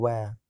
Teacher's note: दंतकोष्ठ, दांत और होठों से मिलाकर वह को बोला जाता है